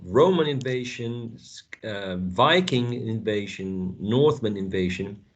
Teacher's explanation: So if in the context you are listing the numbers of invasions that Britain had to undergo, in that case, Roman would be specifically the first syllable of Roman would be the tonic syllable · So in that case, I would say that since the concept of the countries has been mentioned so many times, the emphasis falls onto the type of invasion or the origin of the invasion